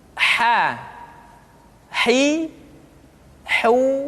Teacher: Namin almuzaini majiza lu janiza Hai berikutnya adalah huruf H Hai huruf H dikeluarkan dari tengah-tengah tenggorokan di tengah-tengah tenggorokan